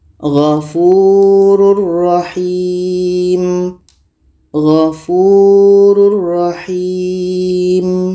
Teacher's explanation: 145 ini ada tanwin bertemu ro ro adalah huruf Idam bilaunah maka tanwin ini kita masukkan ke ro dan tidak boleh dengung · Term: idgham bila gunnah